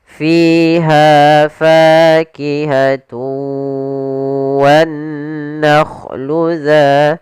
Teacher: Cara membacanya yaitu suara tanwinnya kita masukkan langsung ke huruf wau dan kemudian kita tahan gunahnya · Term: idgam ghunah